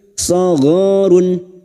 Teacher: Duma tanwin dibaca jelas tanpa mendengung. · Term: idhar halqi